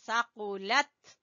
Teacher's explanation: قاف کو زبان کی جڑ سے ، ثقلت، ٹھیک ہے، تا کے اوپر قلقلہ نہیں کرنا، ثقلت